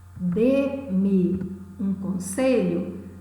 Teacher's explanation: dê é pronunciado de uma forma mais enfática, monossílabo tônico. Veja a contraposição, de monossílabo tônico, de monossílabo átono.